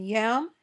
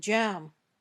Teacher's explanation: When you say y, your tongue doesn't touch the top of your mouth. When you say j, your tongue touches the top of your mouth firmly, then pops open.